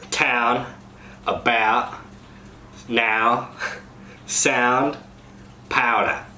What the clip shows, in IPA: ao to æə